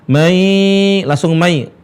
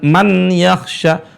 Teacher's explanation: nun bertemu dengan ya. Nunnya hilang. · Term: idgham